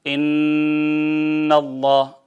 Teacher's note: نون کی آواز کو ناک میں لے جائیں، 2 حرکت کے برابر روک لیں، میم کی آواز کو وَمِمَّا روک لیں، نون ناک کے بانسے میں، یہ بانسا جو ہے خیشوم، اس میں روک لیں 2 حرکت کے برابر، ٹھیک ہے۔ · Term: غنہ